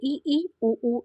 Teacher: है ना और संवृत जो होता है क्लोज बिल्कुल बंद मतलब जिन स्वरों के उच्चारण में मुख द्वार लगभग बंद रहता है